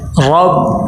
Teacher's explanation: را کے اوپر زبر آ گئی ہے تو اس کو موٹا کر کے پر کر کے پڑھیں گے